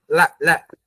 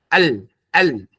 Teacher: ujung lidah kita sisi sebelah kanannya itu ditempelkan ke gusi atas. Miring, lidah kita miring, tempelnya begini nih. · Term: inhiraf